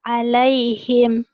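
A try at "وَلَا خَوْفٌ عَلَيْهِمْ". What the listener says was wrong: Wala khaw, jangan how ya. Orang sana. How do you how. Wala khaufun alaihim. Emang di Arab tuh nggak ada o, tapi ini seperti ada o tabkhim ya, tebel. Wala khaufun alaihim.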